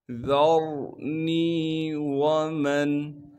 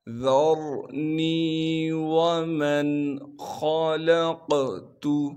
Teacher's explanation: ذَرْنِي وَمَنْ، ذا کو باریک کر کے پڑھیں گے، ذا کو آگے را ساکن سے ملا دیں گے، را ساکن سے پہلے زبر ہونے کی وجہ سے را کو موٹا کر کے پڑھیں گے، نون کے بعد یا مدہ ہونے کی وجہ سے نون کو ایک الف کے مقدار کھینچیں گے، واو کو بغیر کھینچے پڑھیں گے، میم کو نون ساکن سے ملائیں گے بغیر غننے کے۔